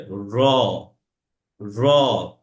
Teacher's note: রড যখন উচ্চারণ হবে তখন সেটা হালকা কম্পন সৃষ্টি হবে